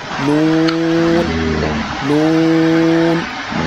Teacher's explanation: জিহ্বার আগা তার বরাবর উপরের তালুর সঙ্গে লাগাইয়া উচ্চারণ হয় নুন, নুন। মানে জিহ্বার আগা তার বরাবর উপরের তালুর সঙ্গে লাগাইয়া, উপরের তালুর সাথে লাগবে, উচ্চারণ হবে নুন।